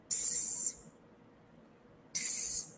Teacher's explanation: Uma das poucas exceções em que uma consoante ocupa o núcleo da sílaba é o sinal de silêncio